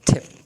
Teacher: that of the sound means the t sound but instead of the rapid release with the plosion and aspiration